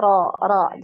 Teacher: Jadi vokal ya vokal dari hurufnya ketika di fathah itu ke o ya. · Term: tafkhim ra